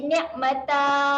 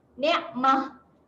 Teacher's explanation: Kalau kita nak wakaf, kita wakafkan dengan bunyi huruf ha. Bunyi huruf ha yang mati. Ni'mah. Apa-apa keadaan pun pada ta marbutah tu, letaklah dia baris tanwin baris bawah ke, tanwin baris atas ke, tetap juga kita matikan dengan bunyi ha yang mati.